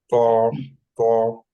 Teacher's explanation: তটা হলো আপনার ওই সামনের জিভের আগাটা goes up and will touch the এই সামনের যে ফ্রন্ট টিথের ইয়াতে গোড়ায় লাগাতে হবে। Originates when the tip of the tongue touches the gums of the upper two front teeth. উপরে গিয়ে কি বলে, জিভের আগাটা গিয়ে উপরে ফ্রন্ট টিথের গোড়া গিয়ে লাগাতে হবে।